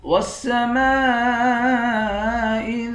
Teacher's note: میم کے بعد الف ہے، الف حروف مدہ ہے اور اس پر مد بھی ہے۔ اس مد کو 5 الف کے مقدار کھینچ کر پڑھیں گے۔